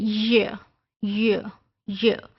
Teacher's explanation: middle of tongue और जब वह हार्ड पलेट को अप्रोच करती है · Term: पलटल